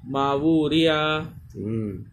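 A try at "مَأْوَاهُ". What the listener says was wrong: या खींचेगा नहीं, मावूरिया नहीं, मावूरिया,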